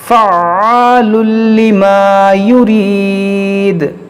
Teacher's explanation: دیکھیے عین مشدد ہے, اس کو پڑھیں گے 2 بار